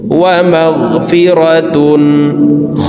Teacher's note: তানউইনের পরে ইজহারের 6 হরফের একটি হরফ খ আসছে, এই কারণে এই তানউইন ওয়ালা তাটি গুন্না ছাড়া স্পষ্ট করিয়া পড়ব।